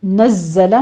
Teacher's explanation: نزلہ میں زے کی آواز سیٹی کی قوی آواز کے ساتھ پڑھیں گے, تشدید بھی ہے, سختی کرنی ہے اس کے اوپر.